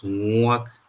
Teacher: we have the long labial form of this ngu sound, which is the ngu.